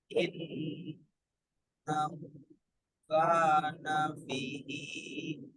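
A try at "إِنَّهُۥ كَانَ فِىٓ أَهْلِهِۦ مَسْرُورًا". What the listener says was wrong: Fi-nya panjang. Fi-nya panjang. Fi ahlihi masruro. 4 sampai 5 harokat.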